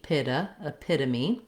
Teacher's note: when we have the T, it'll sound more like a D